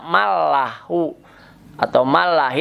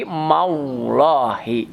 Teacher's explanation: Lamul jalalah atau lapad Allah diawali harokat fathah menjadi tafhim, tebal.